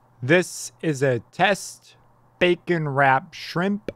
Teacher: this first part has more sibilance because of the s's on the end of test which I say quite loudly